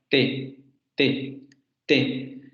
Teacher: ese fonema que tú estás utilizando al principio no es alveolar. En español tiene que ser una dental.